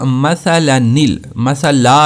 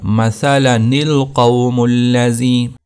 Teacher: تو پہلی جگہ جہاں پر نون قطنی کو پڑھنا ضروری ہے تو اس کو پڑھیں گے ساء مثلا القوم الذین کذبوا، تو کیا ہوگا مثلنل، مثلا، اس کو لا کو آپ نے لمبا نہیں کرنا، مثلنل ہوگا، مثلنل قوم الذین۔